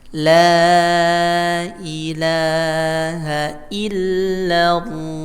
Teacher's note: Lam itu, ya, ujung lidah menempel pada, atau punggung lidah menempel pada langit-langit mulut bagian depan. Anginnya ke samping. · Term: huruf lam